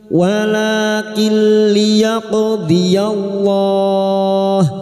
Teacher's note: Nun sukun atau tanwin yang bertemu dengan huruf lam atau ro namanya bacaan idgham bila guna, masuk tanpa mendengung, masuk pada huruf lam tanpa mendengung.